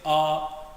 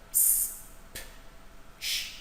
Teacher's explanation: when you say s there is no need for the vocal cord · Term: unvoiced